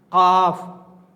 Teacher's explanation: बड़ा काफ जो हलक से निकलता है